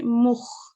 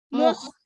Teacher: this kha is not a bouncing letter. So when we recite it, we hold on to it. Rather than say mukh, you can say mukh.